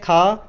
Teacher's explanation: जो खा है ये का वर्ग से आती है और ये कंठ से बोली जाती है